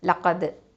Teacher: இப்போது லாம் ஃபத்ஹா ல, காஃப் ஃபத்ஹா தால் சுக்கூன் கத். இந்த தால் சுக்கூன் வந்து என்னது கல்கலத்து சுகரா, லைட்டாக அசைச்சு ஓதணும்